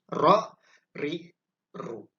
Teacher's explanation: tempat keluarnya huruf ro, ya, itu agak di belakang daripada huruf ta, ya.